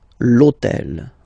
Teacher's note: remember that in French we don't pronounce H, okay, so basically the first sound of the word is the vowel O